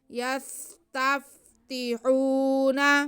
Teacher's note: آگے نون پہ زبر ہے، اسے بالکل نہیں کھینچا جائے گا۔